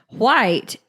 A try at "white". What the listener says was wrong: Enunciate the H.